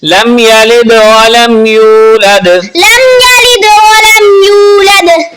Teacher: لم یلد، یہاں پر میم ساکن کا قاعدہ یعنی رول اپلائی ہو رہا ہے۔ جب میم ساکن کے بعد با اور میم کے علاوہ کوئی بھی حرف آ جائے، جس طرح کہ یہاں پر یا موجود ہے، تو وہاں غنہ نہیں کرتے، یعنی اس طرح نہیں پڑھنا لم یلد ولم یولد، اس طرح نہیں، بلکہ ملا کے پڑھنا ہے۔